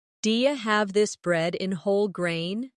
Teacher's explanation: Do you have this bread in whole grain? In connected speech, do you becomes di-ya.